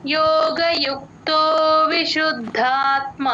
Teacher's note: ద కింద ద ఒత్తు మహాప్రాణం రెండు వినిపించేటట్టు పలకాలి